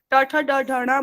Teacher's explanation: तो मूर्धा पे स्पर्श हो रही है। एक ही जगह पर जीव का बार बार इन वर्णों को बोलते हुए स्पर्श होना वह उसका स्थान है।